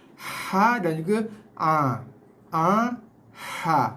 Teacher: Okey, so boleh H datangnya sini. So kita kena fokuskan bunyinya datang daripada kawasan tengah leher.